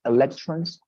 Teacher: You have the accent in the second syllable, electrons.